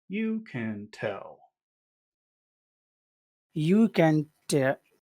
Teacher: So it's like you're going from high to low.